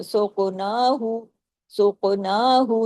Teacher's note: कॉफ को हैवी भी करना है, कॉफ पे कलकला भी करना है, कॉफ कुतुब जद में भी शामिल है और हैवी लेटर में, सुक़नाहु, सुक़नाहु, नून पे खड़ी जबर है।